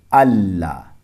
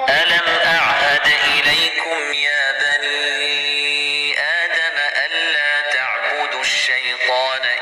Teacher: نون ساکن کے بعد لام ہے تو نون سائلنٹ رہے گا، پڑھنے میں نہیں آئے گا، اسے ملا دیں گے اللہ۔ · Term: ادغام تام